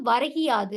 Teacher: முதல் சொல்லோட இறுதியில் இருக்கிற அந்த கு என்னும் எழுத்து கி என ஒலிக்கிறது அதுவும் முழுமையாக ஒரு மாத்திரை அளவில் ஒலிக்காமல் அரை மாத்திரை அளவாக குறைந்து ஒலிக்கிறது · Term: குற்றியல் இகரம்